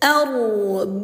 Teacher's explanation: cara membacanya didengungkan ya selama dua harokat atau 2 ketukan. Tuh arbabummu, dengung 2 tuk gitu.